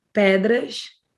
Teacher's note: you did like an SH sound there